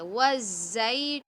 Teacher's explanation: वाव साकिन से पहले पेश है ना, तो वाव मद्दा, इसको हम एक अलिफ की मकदार खींचेंगे। तून, वफ करेंगे ना तो 2 जज़म एक साथ आ जाएंगे, तो उसको थोड़ा सा हम खींच देंगे, वज़ैतून, बस, ठीक है।